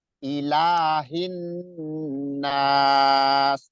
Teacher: dipanjangkan 2 harokat atau 2 alif ya, atau 2 ketukan. Ilahin, jangan ilahin, jangan, tapi ayun aja.